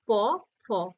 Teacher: প ফ এর মধ্যে শুধু ঠোর দুটো কাজ করছে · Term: অষ্ঠধ্বনি